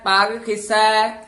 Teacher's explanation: ਪਗ ਵੀ ਪੋਲਾ ਬੋਲਣਾ ਪੱਗ ਨਹੀਂ ਕਹਿ ਦੇਣਾ